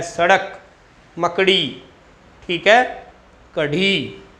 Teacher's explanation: देखो बेटा, जीभ, जीभ मतलब जीवा, उछल कर, जीभ उछल कर किस भाग को? मूर्धा भाग को, मूर्धा भाग को प्रताड़ित करे। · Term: उत्क्षिप्त व्यंजन